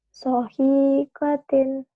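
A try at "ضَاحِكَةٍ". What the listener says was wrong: Bukan, ini do. Dohikatin.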